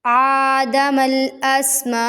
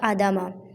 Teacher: حمزہ کو ہم ایک الف کے برابر لمبا کریں گے، اگر ہم اس کو لمبا نہیں کرتے تو یہ بن جائے گا آدمہ۔